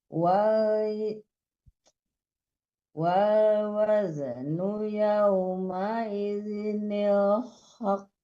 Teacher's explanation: ditahan dulu baru dipantulkan karena hurufnya bertasdid ya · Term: huruf qalqalah